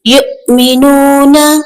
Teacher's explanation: یؤمنون، حمزہ ساکنہ جھٹکا لگے گا تھوڑا سا۔